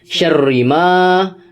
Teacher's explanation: di huruf ri itu ada tasydid, maka dibaca double huruf ri-nya, syarri ma.